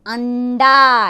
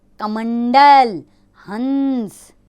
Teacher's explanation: अंग जो ऊपर एक बिंदु के रूप में आता है, इसका उच्चारण नाक यानी नासिका से किया जाता है।